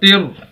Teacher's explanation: تا کو را کے ساتھ ملائیں گے اور را مشدد ہے، شد والا ہے، اس کو موٹا بھی کرنا ہے